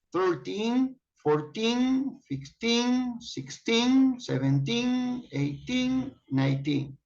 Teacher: If you listen carefully, you notice that after 13 to 19, the accent is on teen.